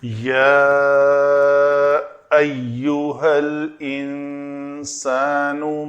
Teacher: تو نون کے بعد سین ہے تو اخفا کیا ہم نے، یا پہ مد تھی کیونکہ الف مدہ محل مد ہے اور بعد والا حمزہ ایو کا حمزہ سبب مد ہوا تو مد لکھی جائے گی، اور را دونوں جگہ کے اوپر زبر کے ساتھ ہیں تو اس را کو پر پڑھا جائے گا۔